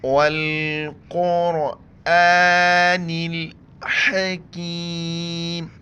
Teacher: قرآن، نون سے نی، نون کو لام کے ساتھ ملائیں گے۔ والقرآن الحکیم، ہا کو گلے سے کریں گے